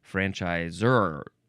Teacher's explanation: Anyway, you are supposed to emphasize that last syllable.